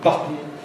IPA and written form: ˈbʌtn̩ (button)